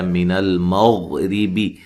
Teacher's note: गैन को मोटा अदा करना है लेकिन हिलाना नहीं है